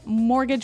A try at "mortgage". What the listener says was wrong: Yeah, it has a T in it, but you don't pronounce it. You say mortgage. Mortgage. Not mortgage. Mortgage.